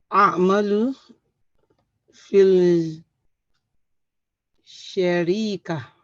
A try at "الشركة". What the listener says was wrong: في الشركة. If you say شركة, that means something different entirely. So you've added يا. في الشركة.